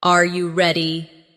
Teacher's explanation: when a native speaker asks a yes or no question like, Are you ready? the pitch of their voice goes up at the end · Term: intonation